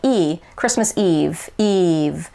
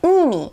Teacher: you really have to smile more when you're saying the japanese e versus the american e because it's a little brighter a little tighter